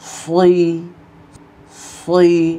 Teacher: সৎ জের সই, মোটা করে উচ্চারণ করতে হবে। মোটা করার সময় আওয়াজে মুখ ভরে যাবে এবং জিহ্বার গোড়া উপরের দিকে উঠে যাবে।